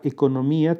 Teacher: La palabra economía tiene 5 sílabas. Hiato entre la vocal I y la vocal A.